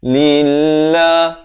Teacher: Lafz jalalah di sini dibaca nipis 2 harakat. Jangan baca lillah, itu tebal.